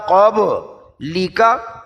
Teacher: قاف زبان کی جڑ اور لہات، با میں قلقلہ